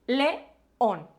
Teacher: Que son dos vocales juntitas que se separan en dos sílabas distintas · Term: hiato